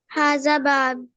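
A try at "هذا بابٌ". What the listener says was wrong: हाजा बाबुन, पूरा पढ़ना है।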